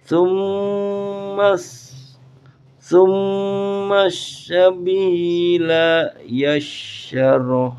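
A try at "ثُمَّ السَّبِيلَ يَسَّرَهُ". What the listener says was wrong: yas pakainya sin bukan shin.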